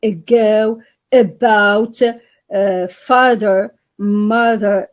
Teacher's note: because it is mid it is mid vowel it is central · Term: schwa